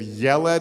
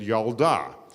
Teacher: there were a bunch of words in Hebrew that when you make them feminine the e sound changes to an ah